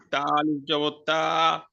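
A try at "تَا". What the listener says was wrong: আলিফ, আলিফ জবর তা মানে তা আলিফ, দুই ঠোঁট লেগে গেছে, তা আলিফ জবর তা। আলিফের উচ্চারণ উপরের দাঁত নিচের ঠোঁট বাতাস ছিল, আলিফ তা আলিফ।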